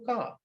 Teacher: So you have car, var, you pronounce this R, whereas in British is a ka, wa. So you don't pronounce the final R, that sound, r.